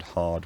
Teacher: the tap never appears before a consonant so the word hard would never have a tap in it